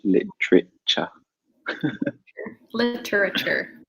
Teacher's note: I think we take out a syllable in British English